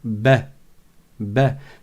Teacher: Ça ressemble au E accent grave, un peu un mélange entre le A et le E accent grave. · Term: fatha